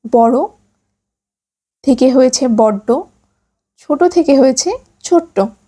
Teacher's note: কখনো কখনো জোর দেওয়ার জন্য শব্দের অন্তর্গত ব্যঞ্জনে দ্বিত্ব উচ্চারণ হয়